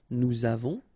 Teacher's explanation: Okay, so j'ai, tu as, final S not pronounced, il a, elle a, nous avons, final S not pronounced, and then we make this little link between the two